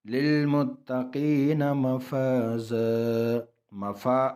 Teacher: مفا الف مدہ الف خالی آگے زبر ہے، ایک الف کی مقدار اس کو کھینچیں گے. مفازا، اور دو تنوین یعنی دو زبر جو ہے وقف کی حالات میں ایک زبر کو گرائیں گے اور ایک کو پڑھیں گے.